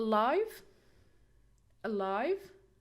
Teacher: syllable not the first syllable we have a live alive so we have schwa sound here we cannot stress it so we'll stress the second syllable